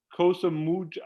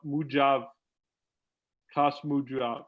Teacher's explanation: I don't pronounce the K or the H. I kind of jump Mujav.